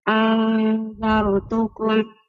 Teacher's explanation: نون ساكنة مخفى عند الذال مفتوحة بغنى حركتين